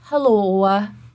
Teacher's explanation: you can hear that little o which is an off Glide and it is because the musculature is so tense in the mouth that when she is done speaking she still has a little